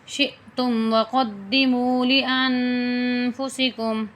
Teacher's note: شین جو ہے حمزہ کے ساتھ ملایا جائے گا، حمزہ کے اوپر جو ہے سکون یعنی جزم ہے، تو اس لیے ہلکا سا جھٹکا بھی دیا جائے گا اس کو